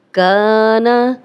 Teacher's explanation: الف مدہ ہے، خالی الف، پیچھے کاف پہ زبر، 2 حرکات لمبا کریں گے، لیکن نون کی زبر لمبی نہیں کریں گے